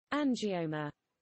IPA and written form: ˌændʒɪˈəʊmə (angioma)